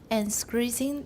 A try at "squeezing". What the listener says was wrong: There's no R in there. Squeeze.